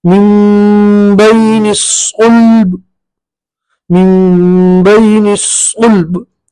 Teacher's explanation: बार पे किसी भी तरह की हरकत नहीं पढ़ना, बार में कलकला करेंगे